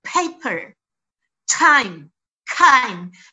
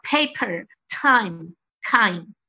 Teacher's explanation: Pada posisi-posisi yang ditekan, biasanya pada posisi awal, bunyi PTK itu biasanya aspirated, ada letupan.